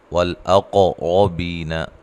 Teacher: قاف کو ہلا کر پڑھنا ہے، قلقلہ ہے